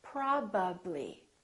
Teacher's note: my lips have to open and close three times